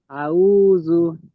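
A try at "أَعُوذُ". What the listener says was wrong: আইনটা আরো চেপে বলেন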